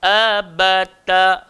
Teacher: So hamzah keluar dekat bawah, sifat dia nipis.